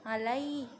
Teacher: Kemudian alai ini madlin karena lam itu berharokat fathah bertemu dengan ya sukun, cara membacanya itu dilembutkan atau dilunakkan